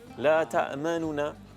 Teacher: Jadi ikhtilas berarti bacaan yang mana menyebut huruf nunnya 1/3 harakat saja dengan cepat